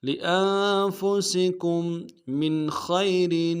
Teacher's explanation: سین کی سیٹی باریک ہوگی